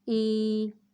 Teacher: یا مدہ کو ایک الف کے برابر کھینچ کر پڑھتے ہیں